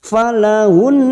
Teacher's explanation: Nun yang bertasdid gunah musadadah kita tekan selama tiga harakat